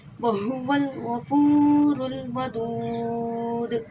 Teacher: دیکھیں غفور پہ فا پہ واو مدہ ہو رہا ہے. واو ساکن اس سے پہلے پیش ہے تو واو مدہ ہوا ہے. ایک الف کی مدہ.